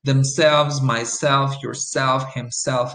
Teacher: the stress is always going to be on the second syllable or at the end of the reflexive.